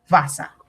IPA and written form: ˈvæsə (Gustavus Vassa)